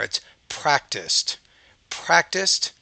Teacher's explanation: It sounds more like a T, the ED, because it comes after a voiceless consonant.